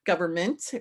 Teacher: Left out our N because we don't pronounce it. And we pronounce the end of it like mint, right?